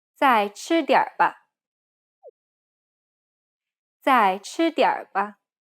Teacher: It's the over-exaggerating R sound where your tongue is curled behind your gum ridge. Make sure you say it in a neutral tone to make it sound natural. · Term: Chinese R